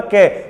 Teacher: कै बोल के देखिए आप, कै, तो जो मुख से हवा निकलेगी वो कम निकलेगी